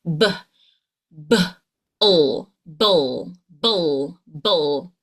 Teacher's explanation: We're going to bring that B sound with the L. So you're going to bring your lips together for the BBB. And you're going to push air, but it will vibrate here in your throat.